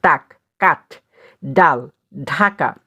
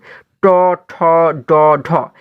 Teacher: আচ্ছা যখন আমরা ট বলি দেখো দেখো আমাদের কিন্তু জীভের যে সামনের অংশটা সেটি কিন্তু আমাদের উপরের যে শক্ত তালু রয়েছে সেটিকে কিন্তু স্পর্শ করে। ট ঠ ড ঢ এগুলো বললে কিন্তু দেখো এই জীভের সামনের অংশটা কিন্তু আমাদের শক্ত তালুটাকে স্পর্শ করে। · জীভের সামনের অংশ উপরের শক্ত তালু স্পর্শ করে তালব্য দন্তমূলীয় ধ্বনি উচ্চারিত হয়।